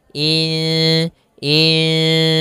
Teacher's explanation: nunnya kita samarkan kepada huruf Sin kemudian terdengar suara samar-samarnya in Insan panjangkan dulu dengungannya atau panjangkan dulu ikhfanya panjangkan dulu